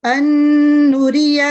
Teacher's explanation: इसमें नून पे आवाज को ठहराते हुए 2 सेकंड के लिए हम लोग मजबूती से पढ़ेंगे اور गुन्ना की आवाज नाक में जाएगी। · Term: नून गुन्ना